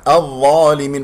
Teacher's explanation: ألف مفخم مرتبة أولى، الساكن مرتبة الرابع. وهنا انتبه إلى أنه الظاء لا يجري فيها النفس، يجري فيها الصوت فقط